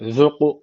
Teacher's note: ka harfi cezim almış. Kalkale tecviti var. Birazcık vurguluyoruz.